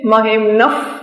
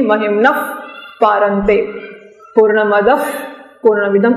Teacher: જ્યારે વિસર્ગ પછી પ કે ફ આવતો હોય ત્યારે વિસર્ગનો ઉચ્ચાર ફ એ અંગ્રેજીના એફ એ દંતોષ્ઠ્ય દાંત અને ઓઠ ભેગા થઈને બને એવો બને છે. મહિમ્નફ ફ દાંત અને ઓઠથી મહિમ્નફ પારંતે પૂર્ણમદફ પૂર્ણમિદમ એવું બોલાશે.